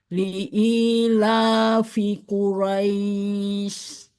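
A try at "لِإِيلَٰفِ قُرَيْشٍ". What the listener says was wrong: Nah, sudah bagus yang li'ilafi. Tinggal Quraisy itu dipanjangkan lagi ya untuk Roish. Seperti kayak mat arid sukun gitu panjangnya ya.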